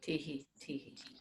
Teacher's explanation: So shan is in the middle and tihi is down.